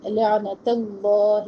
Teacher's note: عین وسط حلق سے اور عین ہلے بھی نہ